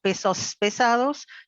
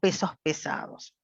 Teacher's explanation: va a ser aspirado porque nuestra lengua en español rioplatense aspiramos